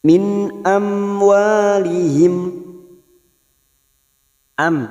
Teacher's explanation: mim sukun bertemu wau Idhar Syafawi dibaca jelas tanpa mendengung